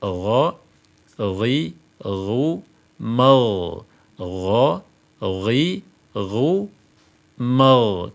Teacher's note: dari istifal kalau istifal itu dibaca rendah yang konsekuensinya tipis sementara istilla itu dibaca tinggi yang konsekuensinya adalah penebalan